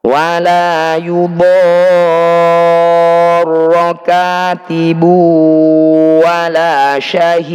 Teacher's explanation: Ini disebut bacaan mad lazim musaqqal kilmi. Cara bacanya kita panjangkan 5 sampai 6 ketukan. Kemudian tasydid tetap kita tekan.